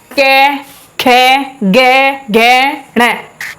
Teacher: निकल रहा है ना कंठ से